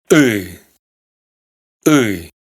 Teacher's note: Es como una i, pero pronunciada más atrás, más hacia dentro de la garganta, con lo cual tiene un sonido más gutural.